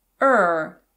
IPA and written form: ər (are)